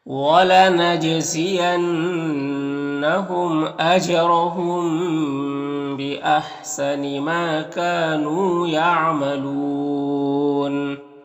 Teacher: جیم میں قلقلہ ہوگا، نون مشدد غنہ ہوگا، میم میں اظہار شفوی ہوگا · میم میں یہاں پر اخفاء شفوی ہو رہا